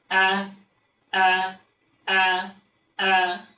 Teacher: Jahar itu ketika kita melafalkan huruf hamzah tidak ada udara yang keluar. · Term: sifat jahar